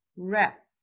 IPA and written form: ræp (wrap)